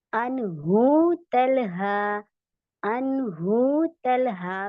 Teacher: नून साकिन के बाद हा आया है, और हा हमारा इजहार है, उसकी वजह से यहाँ पे हम जाहिर करके पढ़ेंगे, अनहु तलहा, अनहु तलहा, कोई गुन्ना इकफा नहीं होगा।